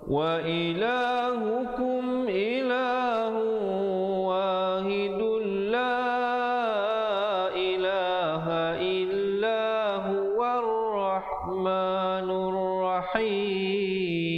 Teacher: Kalau sambung dia akan jadi idgham bila gunnah. Wahidul, asalnya wahidun, tapi bila datang lam jadi masuk terus tanpa dengung.